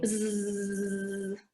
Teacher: So once the air kind of comes up from down below, it sets those vocal cords into vibration, and all it creates is sort of a buzzing, bzzz kind of sound.